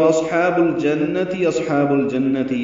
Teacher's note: صاد ساکن پہ ہمس ہوگا جیسے اصحاب النار میں پڑا